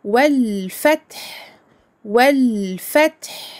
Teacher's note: Ici le lemme est lu. Il n'est pas muet, contrairement au lemme du nom d'Allah, parce que le fa ici est une lettre lunaire.